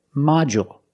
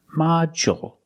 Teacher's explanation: With module, the stress is on the first syllable. So the second syllable is short.